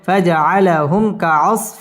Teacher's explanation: হামিম পেশ হুম মিম সাকিন ইজহারে খাস গুন্না ছাড়া পড়তে হবে